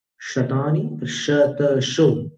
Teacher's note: तालव्य है, नीचे जीभ को दांत पीछे, निचले दांतों के पीछे रखकर तालू पर दबाव देकर उच्चारित करना